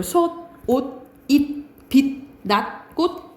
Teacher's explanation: 디귿으로 발음 나는 것이 가장 많아요. 티읕, 시옷, 쌍시옷, 지읒, 치읒, 히읗이 디귿으로 발음 납니다. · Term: 7종성법